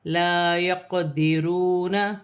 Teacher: یہاں الف مدہ بن رہی ہے، قاف ساکن ہے، حرف قلقلہ میں سے ہے، قلقلہ کے ساتھ ادا کیا جائے گا